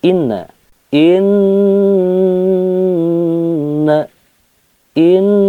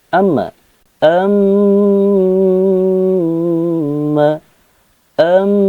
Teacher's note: 3 ketukan irama atau 3 harokat ketika membacakan tanda gunnah